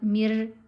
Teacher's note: अब रा मोटी नहीं पढ़ी जाएगी।